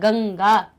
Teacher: यहाँ पे गंगा यानी इंगा की ध्वनि आएगी